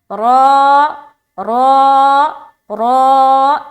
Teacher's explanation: ये रा मोटा अदा हो रहा है। रा के ऊपर कभी भी ज़बर या पेश आए, खड़ा ज़बर या उल्टा पेश आए, 2 ज़बर या 2 पेश आए तो रा को मोटा पढ़ना है।